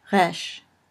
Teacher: Finally, resh, which is like our R, only for Hebrew speakers, it's really a little bit more like a French R, kind of spoken in the back of the throat